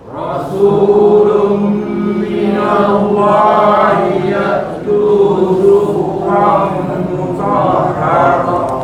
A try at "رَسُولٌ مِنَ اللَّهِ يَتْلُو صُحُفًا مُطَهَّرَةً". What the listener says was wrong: Ada sikit bunyi ta bila masuk, ada hamas, ada angin sikit.